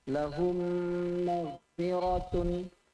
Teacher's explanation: Mim sakinah mudghamah fil mim maftuhah bi gunnah harakatain